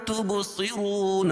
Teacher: رون را کو پر پڑھیں گے اور واو ساکن سے پہلے را کے پر پیش ہے تو را کو ایک الف کے برابر کھینچ کے پڑھیں گے، اور وقف کی صورت میں یہاں مد عارض وقفی ہوگا۔